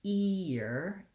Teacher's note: when i say ear i'm starting with a tense e sound this e sound most of you have in your native language